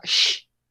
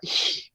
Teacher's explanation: En el sur es este sonido de la C y la H, suena sh, pero en el resto de Alemania suena ich, más como una J fuerte.